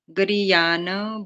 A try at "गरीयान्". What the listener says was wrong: गरीयान नहीं, हलंत है ना, गरीयान